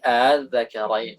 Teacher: Huwa nutqu bil hamzati baina, mengucapkan hamzah tapi hamzahnya itu setengah-setengah gitu. Antara hamzah dan harokat hurufnya. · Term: tashil